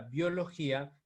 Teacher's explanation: es una palabra grave porque tiene la mayor fuerza de voz en la penúltima sílaba y por lo tanto, y termina en vocal.